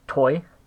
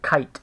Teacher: toy with an aspirated tea that means there's a puff of air and kite with a tea that has no aspiration but if we instead have toy with no asp that's not